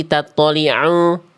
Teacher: Suara ain masuk ke dalam rongga hidung sengau.